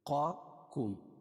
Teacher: ایک قاف کو موٹا پڑھیں گے، حروف مستعلیہ میں سے